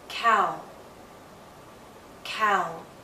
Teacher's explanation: dip thong we'll practice is ow ow as in cow cow again you'll see movement from a more open position to a more closed position